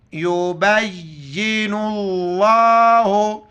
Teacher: یبین اللہ، لفظ اللہ سے پہلے نون پر پیش ہے، لفظ اللہ کو موٹا کر کے پڑھیں گے